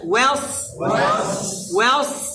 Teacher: প্রথমে ওয়াও পাতলা সদ মোটা